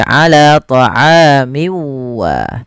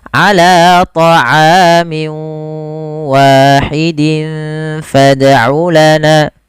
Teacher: masukkan tanwinnya ke huruf waw, kemudian dirubah suaranya menjadi huruf waw. Awalnya ala ta'amin wahid menjadi ala ta'amin wa. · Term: idgham bi gunnah